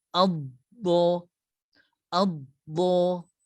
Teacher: Huruf dad tekankan sedikit. Lekapkan lidah kita pada gigi geraham kita.